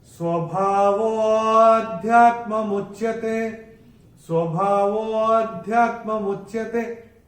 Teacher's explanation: इसमें जो विलुप्त अ है उसको जब हम बोलेंगे वो को तो थोड़ा सा खींच के बोलेंगे, जिससे जो विलुप्त अ है वो निकल के आए। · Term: अवग्रह